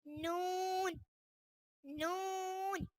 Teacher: जबान का किनारा और अनियाब से सनाया तक के दांतों की जड़ों से अदा होता है